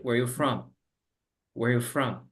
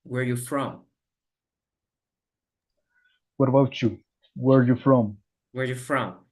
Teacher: es como si ignoraras el R. Entonces nada suena.